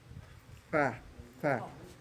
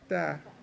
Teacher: you have to stick your tongue, bite between 2 teeth, front teeth.